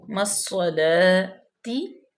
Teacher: ربی جعلنی مقیم الصلاۃ، میم جو ہے وہ مضموم ہے، یائے مدہ ہوگی کیونکہ یا ساکن ما قبل مکسور ہے تو یا مدہ ہوگی، مصلاتی، صاد جو ہے وہ مشدد ہے، صاد پہ زبر ہے، لام کھڑے زبر لا، مصلاتی تازر تی، مقیم الصلاتی، صاد مستعلیہ میں سے ہے، پر بھی پڑھی جائے گی